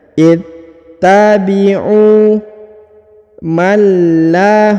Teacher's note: huruf nun sukun ya, menghilang ya karena bertemu dengan lam. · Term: dileburkan ke huruf lam